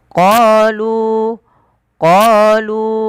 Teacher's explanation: lu 4 harokat karena dia ada bacaan mad jaiz munfasil